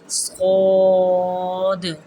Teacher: صاد کے لیے منہ ذرا سا کھولنا ہے، اس کے لیے آواز کو ذرا پیچھے لے جانا ہے اور موٹا کر کے پڑھنا ہے